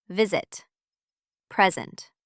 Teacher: Between two vowels, S makes Z sound.